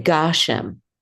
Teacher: we say Gashem. And that is because the accent is on the first syllable. And so, and that has to do with where the trope is.